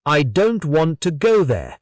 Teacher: The important words in this sentence are stressed, are said strongly. Don't, go. The smaller words like I, to, and there are said more softly or quickly.